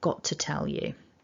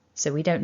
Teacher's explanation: in connected speech, you maybe only hear one t because maybe that first t becomes quite subtle. Got to tell you.